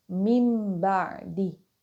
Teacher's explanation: the noon sound changes into the meme sound. So it is not read as min ba'di, it is read as mim ba'di. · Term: iqlab